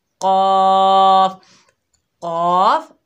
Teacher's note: जब हम काफ को पढ़ेंगे तो हमारी आवाज़ नीचे रहेगी, हम होंठों को स्प्रेड करेंगे। ये बारीक हरूफ है।